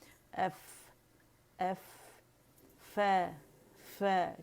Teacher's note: ہونٹ کو اٹھائیں گے اور دانتوں سے لگائیں گے، یا دانت دونوں ایک ساتھ ہوتا ہے یہ عمل، ٹھیک ہے۔